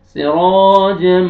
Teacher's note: मीम मुशद्दद है, गुन्ना करेंगे